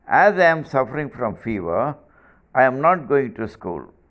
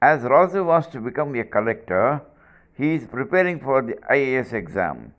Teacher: result Clause ends up in Falling tone